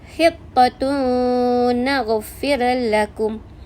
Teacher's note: Tanwin bertemu dengan nun, dibaca dengan dengung 2 harakat. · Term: idgham ma'al gunnah